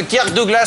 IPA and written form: kɜːk ˈdʌɡləs (Kirk Douglas)